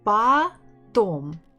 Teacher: is not stressed is sound it sounds like Ah that's why I can guess that the stress is on the second syllable